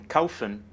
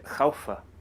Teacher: the Swiss German infinitive lacks the final N